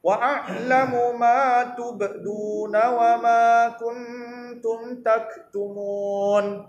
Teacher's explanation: Dengung pada huruf nun, tidak pada huruf ta. Tak boleh masukkan dalam huruf ta. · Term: ikhfa hakiki